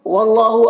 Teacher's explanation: اللہ کا لام کو پر پڑھیں گے، کھڑا زبر ہے، ایک الف کے برابر کھینچیں گے